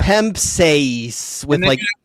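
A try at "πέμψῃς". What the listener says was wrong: you have to change how you say epsilon versus eta. Eta has to be longer. Epsilon has to be short.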